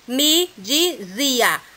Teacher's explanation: Na palavra dizia, a palavra mais forte, a sílaba mais forte é o zi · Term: sílaba tônica